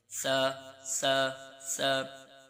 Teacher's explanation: सा ऐसा हरूफ है यह भी सिटी की तरफ मायल होता है लेकिन इसमें सिटी की आवाज नहीं निकालनी क्योंकि इसका मखरज जो है जुबान का सिरा ऊपर के दांतों के अंदरूनी किनारे से अदा होता है जब आप जुबान का सिरा ऊपर के दांतों के अंदरूनी किनारे के साथ लगाएंगे तो इंशा्लाह सा आपका सही निकलेगा। · اس کا مخرج جو ہے زبان کا سرا اوپر کے دانتوں کے اندرونی کنارے سے ادا ہوتا ہے. جب آپ زبان کا سرا اوپر کے دانتوں کے اندرونی کنارے کے ساتھ لگائیں گے تو انشاءاللہ سا آپ کا صحیح نکلے گا.